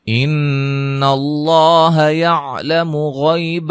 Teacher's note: مشدد پہ غنہ لفظ اللہ کلام کو موٹا ادا کریں گے اور غین کو موٹا ادا کریں گے